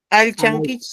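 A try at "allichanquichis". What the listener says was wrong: No es alchey, sino alichey. Alichan, kichik. Alichan, kichik.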